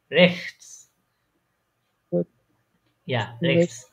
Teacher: খটা বলার সময় একটু বাতাস ছাড়বেন, তাহলে দেখবে এক্সাক্ট প্রনাউন্সিয়েশনটা বের হবে।